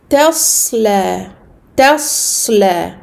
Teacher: bien amincir le ta, à grossir, emphatiser le sod et à amincir le lem